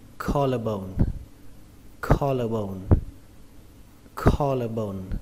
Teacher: Trọng âm của từ này rơi vào âm đầu tiên, âm kho. Âm kho trong từ cá kho.